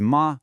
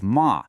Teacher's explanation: the word for mother is ma with a high flat tone. But the word for horse, that's ma with a tone that dips down and comes back up. The only thing separating those two words is the shape of your pitch.